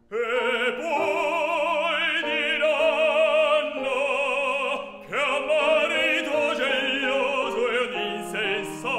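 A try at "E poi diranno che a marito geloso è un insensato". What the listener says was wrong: I think that E flat needs to be longer.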